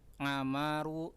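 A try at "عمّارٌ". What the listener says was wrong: Ammarun. Mimnya disambung ke ain. Ammarun.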